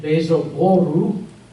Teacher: Yeah, it's the liquid problem, and the double L makes no difference because it's phonetically the same as a single L. So we cannot end it with the R sound, and we therefore put the U vowel at the end.